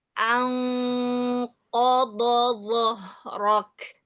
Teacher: Alladzi anqadha dhahrak. alladzi Qa tebal, dha tebal, dha tebal. Jadi tetap di atas terus pangkal lidahnya.